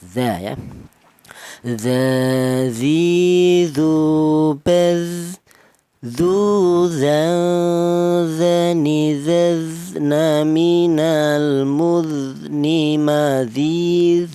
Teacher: Untuk kali ini tuh hanya mengulang agar tidak lupa ya, dimana huruf dzal ini keluarnya huruf berasal dari ujung lidah menyentuh ujung gigi seri atas